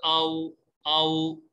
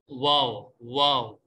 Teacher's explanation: واو ادا ہوتا ہے دونوں ہونٹوں کو گول کرنے سے، یعنی اس کو آپ نے واضح طور پہ پہلے بھی آپ نے سنا ہوگا کہ واو جب ادا کرتے ہیں حمزہ واو زبر آؤ آؤ، تو پیش اور واو ان دونوں کی ایک ہی آواز ہے.